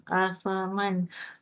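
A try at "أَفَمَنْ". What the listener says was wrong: Afamai. Dia bukan mang tau. Nun, cara kita sebut dulu. Nun mati bertemu huruf ya. Nama dia ikhfa hakik. Sorry. Nun mati bertemu ya idgham ma'al gunnah. Nama dia idgham ma'al gunnah. Ya, idgham ma'al gunnah.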